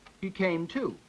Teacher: I've got primary stress on to and tertiary stress on came.